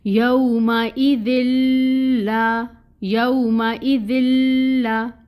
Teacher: لام پہ تشدید ہے نا تو ٹائم ٹیکنگ ہوگا، اور یہ جو فتح کی حرکت ہے یہ 1 کاؤنٹ پڑھی جائے گی۔ · تنوین آ رہی تھی، نون ساکن یا تنوین کے بعد اگر لام آ جائے یا رو آ جائے تو پھر ہم ادغام بلا غنہ کرتے ہیں، یعنی غنہ نہیں کرتے لیکن ادغام ہو رہا ہوتا ہے